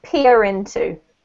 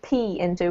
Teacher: when you have into coming next, you need to hear the R, so it's peer into.